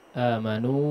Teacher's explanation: Terpakai mad jaiz yang minimal 4 harakat ya